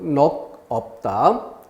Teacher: 넉 했을 때 대표음 기역으로 소리가 났고 그것이 넘어간다는 점